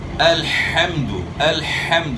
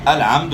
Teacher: ح جو ہے اقصی حلق سے ادا نہیں کرنی، یعنی ح کو ہ سے چینج نہیں کرنا